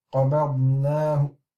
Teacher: So if we are stopping and we are doing it with a Rawm, it would be قَبَضْنَاهُ. So we can hear the weakening of the dhamma.